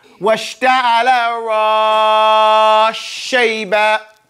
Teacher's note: Right? Here, this idgham is kabir. So it's a seen and sheen because they're similar. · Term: idgham kabir